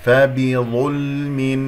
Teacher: اللام ساكنة، وننتبه، فبظلم، يجري فيها الصوت فترة زمنية بسيطة